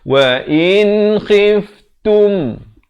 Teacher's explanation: Ta baris dhammah bunyi tu bukan bunyi to.